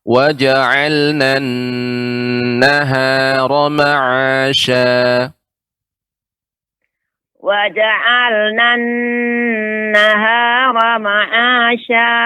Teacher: Ada sedikit tadi yang harus diperhatikan, termasuk nun yang bertasydid dan mim bertasydid ini harus lebih diperlama ya, gunnahnya